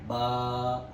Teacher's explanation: बा को खींच के पढ़ना है। एक अलिफ के बराबर।